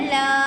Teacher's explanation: اب یہ حرف مدہ ہے، الف خالی، اس سے پہلے لام کے اوپر زبر ہے تو اس کو ہم ایک الف کے برابر کھینچ کر پڑھیں گے